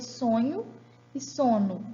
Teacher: Igual eu teria sonho e sono. Mudei um segmento só, a nasal, e mudei de significado.